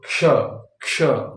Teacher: तो क और मुर्धन श मिला के हो जाता है क्ष अब इसमें तीन चीजें आ जाती है क मुर्धन श और थोड़ी सी आवाज आती है छ की